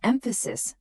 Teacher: in the word emphasis, the stress is on the first syllable